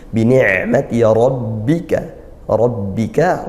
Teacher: fathah dibaca tebal, tafkhim ya, pangkal lidah dinaikkan